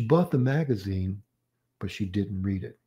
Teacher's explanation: So we have two major patterns here because the first is an unfinished thought. It is a rising, and the second finishes the thought. It's falling. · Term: rising intonation, non-final intonation